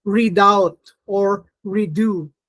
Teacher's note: you don't have the flap, but you retain the da because the second syllable is stressed